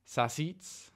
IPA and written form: sɑˈsiːʦ̮ (sausage)